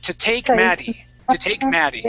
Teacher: So the double T here, I turn that to a D sound. Okay, and this word here is actually turned to T instead of to.